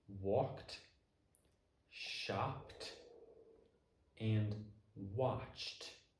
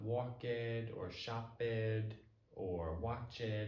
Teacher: If the sound before the ed is unvoiced, like these 3, then the ed will sound like a t, like t. So these 3 words would sound like walked, shopped, and watched.